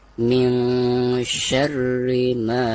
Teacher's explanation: bacaan ma di sini itu harus dibaca 2 harokat karena dihukumi mad tabi'i